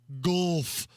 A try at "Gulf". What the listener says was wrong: It's not like putt-putt golf.